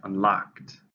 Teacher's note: 2 syllables, stresses on the second, unlocked.